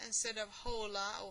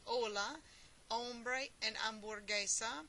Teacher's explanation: the letter h in spanish is silent